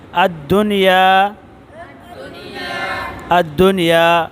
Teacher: دیکھو نون ساکن کے بعد یا ہے لیکن ادغام نہیں ہوا